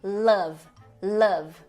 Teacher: a vogal Central que é esse V de cabeça para baixo